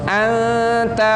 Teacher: kalau nun mati bertemu ta harus samar-samar baca